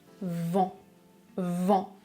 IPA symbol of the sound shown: ã